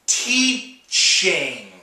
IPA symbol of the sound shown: tʃ